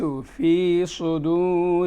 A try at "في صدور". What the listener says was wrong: الآن هنا كلمة صدور لابد من الاعتناء بالصاد. كأنها سين، اللي قبلها سين فهي تجذبها.